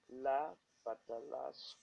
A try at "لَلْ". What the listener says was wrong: saying la. Do not say la. Say lal. Lam fata lam sukun lal.